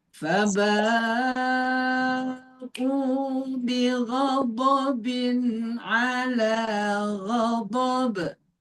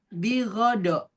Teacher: Lidah-lidah di samping kanan atau kirinya naik ke atas supaya berasa tebalnya, berasa gesekan dengan atasnya dan kemudian ada aliran panjang.